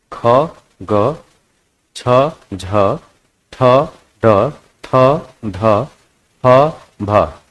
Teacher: ऐसे व्यंजन जिनको बोलने में अधिक प्रयत्न करना पड़ता है बोलते समय मुख से अधिक वायु निकलती है उन्हें महाप्राण व्यंजन कहते हैं इनकी संख्या 15 होती है देख